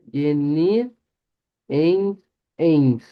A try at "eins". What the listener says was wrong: Bien, solo que recuerden que el uno es con I, vea. Sí se escribe con EI, pero se pronuncia con I. De ahí decimos eins, eins. Sí, el resto sí, solo ahí que lo cambió por una E. Sí, generalmente, recuérdese cuando vean el diptongo EI en el alemán, cuando vean eso así, vean escrito.